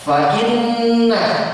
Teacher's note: gunnah ditahan ya, ditahan paling tidak 2 ketukan